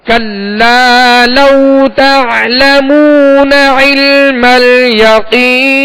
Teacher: یہاں کلا لام کے ساتھ الف مدہ ہے، ایک الف کی مقدار میں کھینچیں گے. کلا لو، اب لو یہاں وہ لین ہے لہذا نرمی کے ساتھ ادا کریں گے، اس میں جھٹکا بھی پیدا نہ ہو اور مجھول بھی ادا نہ ہو